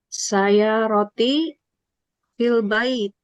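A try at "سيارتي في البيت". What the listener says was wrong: mumtaz.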